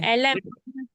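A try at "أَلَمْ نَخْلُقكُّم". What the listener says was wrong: மீமை நீட்டணுமே 3 second.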